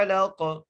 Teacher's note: قاف کو وقف کی صورت میں ہم ساکن کر دیں گے تو قاف پر قلقلہ ہوگا